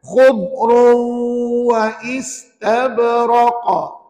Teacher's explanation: pastikan khubru wa itu tidak melantun pada dhadnya. Sebab huruf dhad bukan huruf qalqalah.